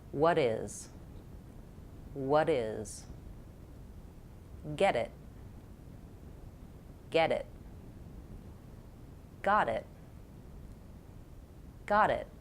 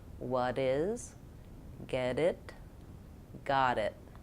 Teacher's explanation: So for all of them, I'm using that medial T. The T sounds more like a D.